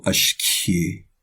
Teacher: It's pronounced completely low.